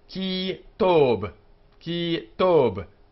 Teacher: The B is hard. It's not aspirated.